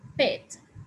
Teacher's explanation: we pronounce it with an aspirated p